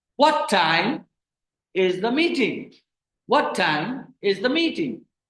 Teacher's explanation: So rising, falling intonation. When you say rising, falling intonation, so in that case, the pitch rises and then falls. · pitch rises when you say that to what and falls on meeting